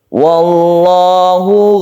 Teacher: Wallahu kita sebut dengan lafdul jalalah yang dibaca tebal karena sebelumnya ada fathah